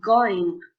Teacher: as the back of the tongue touches the soft palate and restricts air flow. For this reason, it's an occlusive sound. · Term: velar